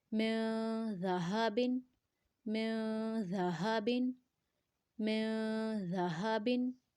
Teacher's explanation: ہا کا ساؤنڈ گلے کے نچلے حصے سے آئے گا یعنی چسٹ کے پاس سے آئے گا. زال کو نرمی سے پڑھیں گے.